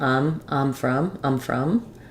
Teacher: In fast speech, I might lose a little bit of that diphthong. It might sound a little bit like I'm from.